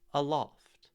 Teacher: The first syllable is second syllable is loft. There's much more weight, there's much more stress on loft. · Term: iamb